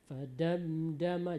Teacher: Mim mati jumpa dengan dal, dia seharusnya pendek saja Bu. Fadamdama, jangan dipanjangkan.